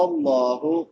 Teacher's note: لفظ اللہ بھی پر پڑھا جائے گا کیونکہ لفظ اللہ سے پہلے زبر ہے۔